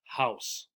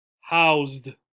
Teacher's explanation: Adding the ed also changes the sound for the s. So it is not s, it is z.